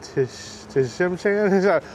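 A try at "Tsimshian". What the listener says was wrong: The T silent, Simshan.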